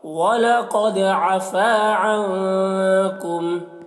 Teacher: قد قاف کو پر پڑھیں گے دال میں قلقلہ کریں گے. فا میں الف مدہ ہے اور عنکم نون میں اخفا ہوگا